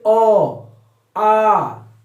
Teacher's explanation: अ और आ का उच्चारण कंठ के द्वारा होता है।